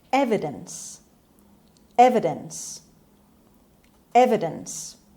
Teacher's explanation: The stress is on a sound, is on the first syllable. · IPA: /ˈevɪdəns/